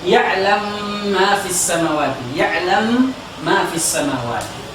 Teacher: Di dalam riwayat As-Susi dia memasukkan mim ke mim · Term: idgham kabir